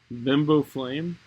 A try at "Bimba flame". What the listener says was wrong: Bimba, not bimbo. Bimba flame.